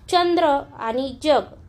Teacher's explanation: आपली जीभ तोंडातील दाताच्या मागच्या बाजूला ज्या ठिकाणी खरबरीत भाग आहे, थोडासा कडक भाग आहे, त्या ठिकाणी स्पर्श करते आणि आपण त्यावेळी जी वर्ण उच्चारतो त्यांचा उच्चार हा य युक्त होतो आणि ज्या वर्णांचा उच्चार य युक्त होतो त्यांना तालव्य वर्ण असे म्हणतात.